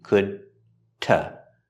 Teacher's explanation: The D at the end of could is a stop D